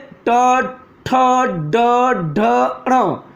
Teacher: ये मूर्धा से उच्चारित वर्ण है, मध्य से निकलते हैं